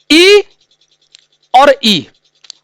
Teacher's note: दोनों ई का उच्चारण कहां से होता है, तालु से होता है।